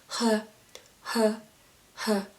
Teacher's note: we don't use any part of tongue or palate or gum, teeth, anything, but just let the air comes out of your throat, like when you sigh, like h, h, h, similar to the H sound in English.